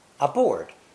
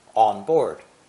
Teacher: when spoken quickly the n sound disappeared completely